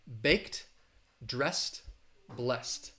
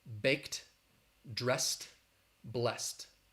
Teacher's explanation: so those e d uh endings all have that t sound because the the consonant before is voiceless